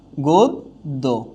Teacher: অর্থাৎ অন্তে যদি জফলা থাকে, তাহলে অন্তবর্ণটা কি হয়ে যাচ্ছে? দ্বিত্ব হয়ে যাচ্ছে।